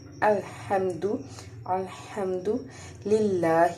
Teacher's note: یہ اظہار شفوی ہے اور یہاں پہ ہم نے میم پہ غنہ نہیں کرنا اس لیے جلدی سے پڑھنا ہے · ہا کو حرف حلقی ہے حلق سے ادا کریں گے حلق کے درمیانی حصے سے · لام کے اوپر کھڑا زبر ہے اس کو ایک الف کے برابر ہم کھینچ کے پڑھیں گے